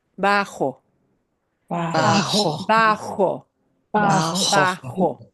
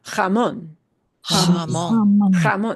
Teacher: J does sound like an H, except you got a little phlegmy action.